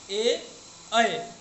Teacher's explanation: ए, ऐ का उच्चारण स्थान कंठ और तालु दोनों से होता है